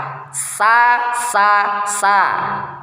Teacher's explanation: saofir ada seperti siulan burung ya Ah ini saofir ya kemudian posisi lidah merendah istifal dan infitah merendah sa dibawan lidahnya sa dan infitah buka sa sa sa